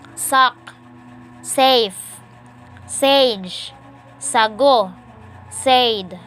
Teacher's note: Alveolar sibilants. Voiceless alveolar sibilants. Initial.